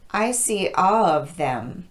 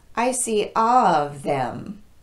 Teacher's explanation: together it will sound like this I see all of them because I'm omitting the L in all it sounds like I'm saying of instead of all of I see of them that's confusing to your listener and it